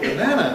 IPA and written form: bəˈnænə (banana)